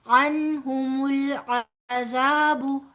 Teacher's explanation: عنہم نون ساکن کے بعد ہا آ رہا ہے جو کہ حروف حلقی میں سے ہے، لہٰذا یہاں پر نون کا اظہار کر کے پڑھیں گے